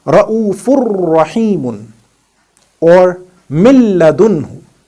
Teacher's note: And this kind of Idgham, where we do not articulate any part of Noon, is known as Idgham kaamil or Idgham bila gunna.